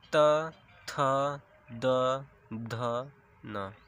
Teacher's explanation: त वर्ग। त वर्ग का उच्चारण स्थान होता है दंत। इसका जब आप उच्चारण करते हैं तो आपकी जीवा दांत को स्पर्श करती है।